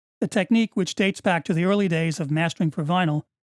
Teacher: the upwards inflection of the last two words clearly leads into a follow-up comment